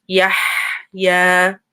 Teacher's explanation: we have a ha, hot ha, with a sukoon. So make sure you hear that.